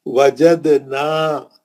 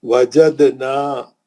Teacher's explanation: وجدنا دال پہ خلخلہ ہے، نا پہ مد اصلی ہے.